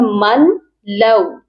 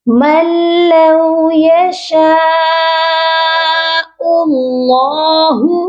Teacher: ہم نے ڈائریکٹ میم کو لام کے ساتھ ملانا ہے، ادغام کرنا ہے اور بغیر غننے کے